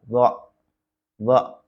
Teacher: karena ini huruf d termasuk huruf istilla dibaca mengangkat